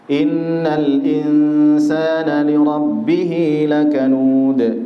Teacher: innal ada nun bertasydid maka dibaca gunnah, ada tempo di situ. Insana di situ ada ikhfa, nun sukun bertemu dengan sin, samar ya pertengahan saja, kemudian didengungkan, dipanjangkan 2 harokat.